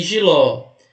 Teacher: jiló também a última sílaba é a tônica é uma oxítona terminada em o Então tem que acentuar qualquer alternativa que tenha